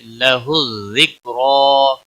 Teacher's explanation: لَهُ الذِّكْرَى، کاف کو ہلانا نہیں، را کے اوپر کھڑی زبر ہے اس لیے موٹا پڑھا جائے گا، ایک الف کے برابر کھینچ کر بھی پڑھا جائے گا وقف کی صورت میں بھی۔